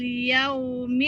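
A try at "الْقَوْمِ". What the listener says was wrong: Qaumil. Yaumil dari mana ianya? Qaumil. Qaumil. Jangan yaumil. Qaumil.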